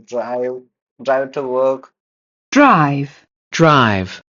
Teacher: especially with Russians when they speak in English, they stress on that R.